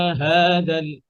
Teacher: এই হা এর আওয়াজ এবং বাতাস দুটো একসাথে চলমান থাকবে হা রখাওয়া